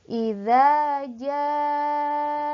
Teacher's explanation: mad bertemu dengan huruf hamzah dalam satu kalimat. Ya, panjangnya dua alif, berarti 4 harokat. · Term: mad wajib muttasil